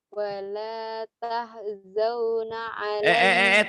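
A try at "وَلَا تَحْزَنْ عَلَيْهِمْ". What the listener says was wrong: Tahzau dari mana? Tahzan. Wala tahzan alaihim.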